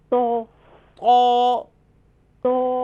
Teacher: زبان کی نوک اور اوپر کے دانتوں کی جڑ سے ادا ہوتا ہے.